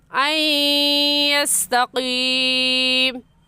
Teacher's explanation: ساکن کے بعد حروف یرملون یا غا میم لام واو نون، حروف یرملون میں سے یا آ گئے تو یہاں پر غنہ ادغام کے ساتھ کریں گے